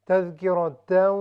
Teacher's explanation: تذکرہ را ہیوی ہے چونکہ اس پر فتحہ ہے